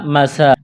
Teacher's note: میم کو جلدی پڑھنا ہے، سین کو ایک الف کے برابر کھینچنا ہے، کڑا زبر ہے، کاف کو باریک کرنا ہے، یا ساکن سے پہلے زیر ہے، یا مدہ ہے، ایک الف کے برابر کھینچنا ہے، نون کو جلدی پڑھیں گے۔